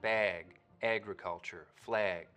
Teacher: raising and tensing in the Trap vowel when it comes right before a g sound